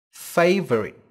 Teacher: trọng âm rơi vào âm Tiết đầu tiên